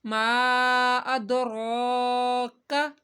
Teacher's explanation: جب حروف قلقلہ ساکن ہوتے ہیں تو قلقلہ کرتے ہیں، ادراک، را کو موٹا پڑھنا ہے اور لمبا بھی کرنا ہے ایک الف کے برابر